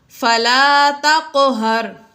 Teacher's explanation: قوف ساکن ہے حروف قلقلہ میں سے اس لیے ہم نے اس کو ہلا کر پڑھا یعنی خوب ظاہر کر کے پڑھا